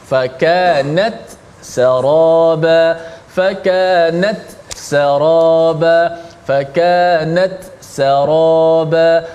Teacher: Ta itu diizharkan, dijelaskan mati, kemudian ambil sin yang berbaris di atas. Maka kena hati-hati, slowkan sedikit, perlahankan sikit suara, masuk perlahankan pergerakan. · Ta pun bunyi mati, ta pun bunyi mati, sin pun bunyi angin sin. Ta ada angin dia, sin ada angin dia.